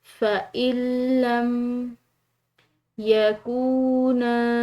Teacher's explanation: فَإِن لَّم یکونا، واو ساکن ہے، مسموم حرف کے بعد ہے، تو یہ واو مدہ ہے، اور واو مدہ کو کھنچاؤ سے ادا کیا جاتا ہے ایک الف کے برابر